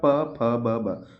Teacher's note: प वर्ग होट से बोला जाएगा